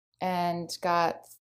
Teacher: Actually, now that I'm listening to it, it sounds more like and. She's sort of switched the a vowel to something like the e.